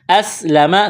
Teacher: سین میں سیٹی کی آواز پیدا کریں گے